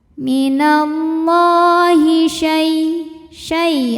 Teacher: ada harfulin sebab ada ya sukun didahului baris fathah maka dibacanya lembut